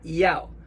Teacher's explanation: juntamos en una misma sílaba yao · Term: sinalefa y la sinéresis